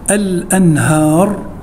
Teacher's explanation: نون ساكنة بعد حرف الهاء، والهاء من حروف الإظهار